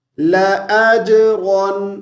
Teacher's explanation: را کو فل موٹی آواز سے پڑھیں گے